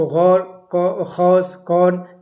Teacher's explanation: واو مجہول وہ واو ہے جس کے قبل پیش نہ ہو اور اس کو کھینچ کر نہ ادا کیا جائے